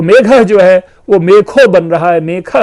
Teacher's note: इसी प्रकार मेघ शब्द है तो मेघ जो है वो मेखो बन रहा है, मेखा बन रहा है, घ अपने द्वितीय में कन्वर्ट हो रहा है, ख में कन्वर्ट हो रहा है।